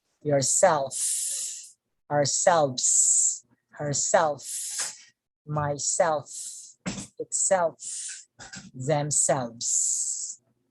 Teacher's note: intensive reflexive pronouns you see the strongest stress on the second syllable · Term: stronger stress